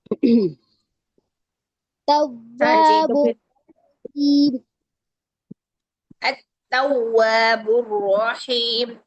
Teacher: वाव को दोनों गोल होठों से अदा कीजिए दांतों के करीब से मत अदा कीजिए